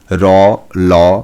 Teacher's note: জিহবা প্রান্ত দন্তমূলে শ্বাসবায়ুকে বাধা দেওয়ার ফলে যে ধ্বনি উচ্চারিত হয় সেই ধ্বনিকে দন্তমূলীয় ধ্বনি বলে